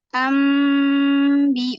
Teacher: jadi cara membacanya maka ditukar menjadi huruf mim dengan merapatkan kedua bibir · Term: iqlab